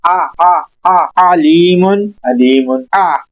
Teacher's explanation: आइन अदा करते वक्त इसका मखरिज था हलक के दरमियान में, आपने 1 सेकंड के लिए झटका सा लेना है, हलक के दरमियान में आवाज को थोड़ा सा ब्रेक करना है, फिर ये आइन अदा होगा।